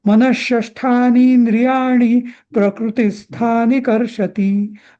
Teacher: आता इथे ती हा ह्रस्व आहे ना, तरी तो चरणाच्या शेवटी आल्यामुळे कर्षती हा दीर्घ म्हणायचा.